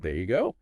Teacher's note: Notice how the energy, the stress kind of builds towards go, and the pitch goes up on go. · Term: stress and pitch